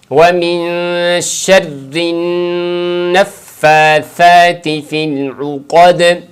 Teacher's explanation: اس کے اندر عین قوف دونوں کا خیال رکھیں، عین کو پڑھیں عو اور قوف کو پر کر کے موٹا پڑھیں، اور دال پہ وقفہ جو ہم کریں گے تو وہاں پر ہم قلقلہ کے ساتھ وقف کریں گے، تو اس پوری آیت کو پڑھیں گے وَمِن شَرِّ النَّفَّاثَاتِ فِي الْعُقَدِ۔